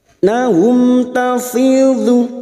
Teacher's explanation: fi kasrah diikuti ya sukun 2 harokat tafidhu minad huruf dhad yang berharokat dhammah.